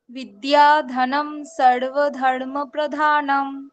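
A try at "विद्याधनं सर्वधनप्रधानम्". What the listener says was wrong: সর্বধনপ্রধানম, ধর্ম নয়, সর্বধনপ্রধানম।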